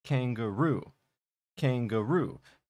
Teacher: So we have the word kangaroo, and if you heard how I said it, kangaroo, kangaroo. The final syllable has what's called primary stress. It's the loudest, it's the longest in the word, kangaroo. And we also see that kang, the beginning, has a little bit of stress on it.